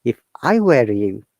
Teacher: If I were you, you're stressing on you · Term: stressing on the word